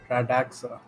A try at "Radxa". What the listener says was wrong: Radaxa? No, there's no A in there. It's Radza.